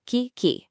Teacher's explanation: The hard consonant in Kiki, that C- sound, is acoustically sharp. It's an abrupt burst of sound.